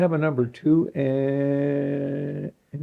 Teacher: he would get and out and never hit the D